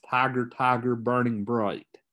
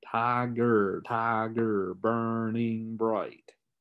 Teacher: you have a foot that has a stress syllable then an unstressed syllable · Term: trochaic line